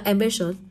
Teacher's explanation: nó sẽ rơi vào âm tiết thứ hai của từ